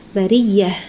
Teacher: Hati-hati ya tam marbutnya menjadi ha.